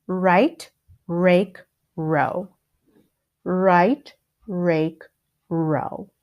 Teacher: with the R sound your tongue does not move in fact your tongue the sides of your tongue are trapped next to the sides of your teeth